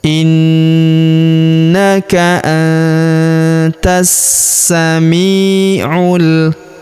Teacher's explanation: Huruf ta langsung sambung ke huruf sa yang berharakat tasydid. Langsung masuk ke sini kita tahan dan kita tekan ya. · Langsung masuk ke sini kita tahan dan kita tekan ya. Alif lamnya tidak dibaca. Alif lam syamsiyah.